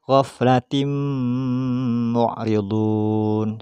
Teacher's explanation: maka suara tanwin di sini harus masuk ke Mim